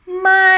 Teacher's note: the voice go up first and then drops down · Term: falling tone